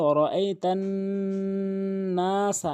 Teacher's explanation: নুনে বা মিমেত এরকম তাসদীদ বা কালাওয়ালা চিহ্ন দেখা মাত্রই আপনি ওয়াজিব গুন্না নাকের ভিতরে নিয়ে পড়বেন